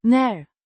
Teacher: pronounced N with a short a sound similar to the a in cat and a rising intonation